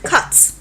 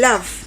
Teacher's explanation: the shape of the lips is not round it is spreading